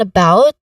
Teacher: in about, the stress is on the second syllable